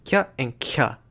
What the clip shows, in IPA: c and cʰ